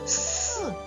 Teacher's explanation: твердий приголосний коли ми його вимовляємо повітря зустрічає перешкоду у вигляді зубок та язичка